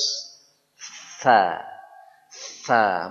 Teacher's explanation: Bunyi dia huruf s. S biasa tapi lidahnya ke atas. Kalau S biasa sin lidah ke bawah, ke gigi seri bawah. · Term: huruf sa